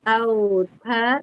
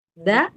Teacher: bedanya kalau ta mahamas ada mengalir nafas, kalau da tidak mengalir nafas